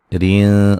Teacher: را کو باریک پڑھیں گے اور نون تنوین کا اخفا ہے باریک